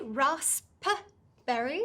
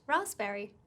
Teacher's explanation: got some tricky silent letters the pu in raspberry is silent there's no p sound so you don't say rasp berry right it's just raspberry